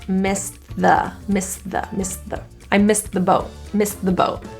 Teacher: So I have an S, a T for missed, and then I have a TH, another STTH combination. That T can go away and I can say the S and TH.